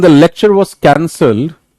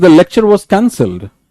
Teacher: High pitch on first syllable of the cancel, but declining pitch on the second syllable, indicating the end of the first thought.